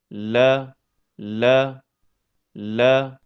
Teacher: Makhraj huruf lam terletak pada pertemuan antara ujung tepi lidah dengan gusi bagian atas.